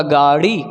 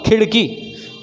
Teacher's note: बड़ा ड़ बोलने के लिए भी मूर्धा में टच करवाना होता है जीभ को, लेकिन झटका दे के जीभ को निकालना होता है। जब हम ड़ बोलते तो जीभ को झटका दे के निकालना होता है।